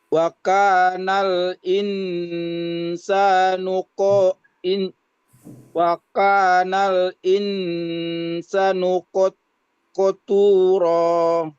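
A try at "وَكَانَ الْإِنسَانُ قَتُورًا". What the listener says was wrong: Sa-nya itu dibaca panjang, sin-nya dibaca panjang. Diulang sekali lagi.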